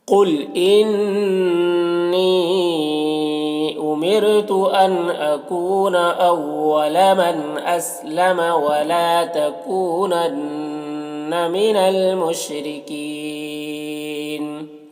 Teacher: تکو میں واو مدہ ہے، ایک الف کے برابر کھینچیں گے، اور نون مشدد غنہ کے ساتھ میں پڑھیں گے